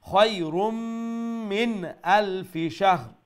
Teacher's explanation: এই নুন সাকিনরে আরবার ইজহার স্পষ্ট করে কইবা